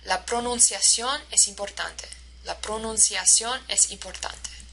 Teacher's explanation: So every single syllable is stressed in the same way.